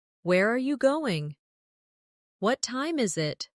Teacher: for information questions, those starting with who, what, when, where, why, how. The tone often falls at the end. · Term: falling tone